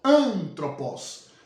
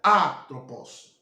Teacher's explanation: era pronunciada com a tonalidade ascendente Ou seja que sobe